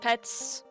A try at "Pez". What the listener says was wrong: Pez. There's no T. Pez. Well, it's incorrect.